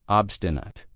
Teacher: notice how I pronounce it with a schwa at the end